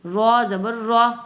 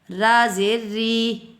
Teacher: رو زبر رو، موٹا پڑا، را زیر ری، اب تھوڑا سا باریک ہو گیا